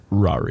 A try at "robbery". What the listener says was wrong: B. It's 2 B's in there.